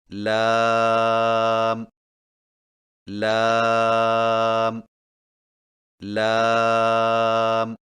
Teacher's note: لام کی ادائیگی میں زبان کے باریک کنارے کو اوپر والے دانتوں کے مسوڑوں سے لگا کر باریک آواز میں پڑھیں